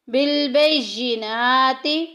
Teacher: نون کے اوپر کھڑی زبر آ گئی، 1 الف کے برابر لمبا کریں گے